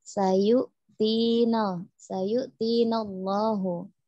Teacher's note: Sayu-sin ya, tidak syayu. Kemudian yu-nya di situ hamzah sukun, bukan ain. Sayu-tina, sayu-tina Allahu.